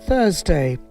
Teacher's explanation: এটা আমেরিকান উচ্চারণ আছে Thursday, Thursday, Thursday, British Thursday। শুধু আরটা হচ্ছে না।